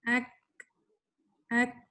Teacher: جو کاف ہے یہ ہمس کا لیٹر بھی ہے اور یہ شدہ کا لیٹر بھی ہے، تو اس لیے ہم اس کو پڑھ رہے ہیں ایک، ایک.